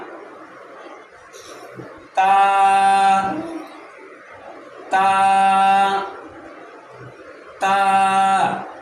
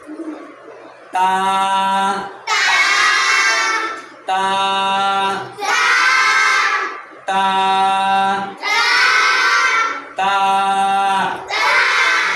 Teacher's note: এই হরফটির নামের শুদ্ধ উচ্চারণ করতে হলে জিহ্বার আগা সামনের উপরের দুই দাঁতের গোড়ার সঙ্গে লেগে পাতলা আওয়াজে উচ্চারণ হবে।